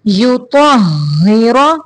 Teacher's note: ہا کے اوپر شد ہے اس لیے تو کو ہا کے ساتھ تھوڑی دیر ملائیں گے